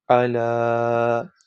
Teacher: کھڑی زبر کو 2 الف کی مقدار لمبا کرتے ہیں یعنی 2 سیکنڈ۔